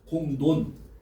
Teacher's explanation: 앞의 음은 이응의 영향을 받아서 콧소리 비음인 니은이야, 니은으로 바뀌었죠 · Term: 비음화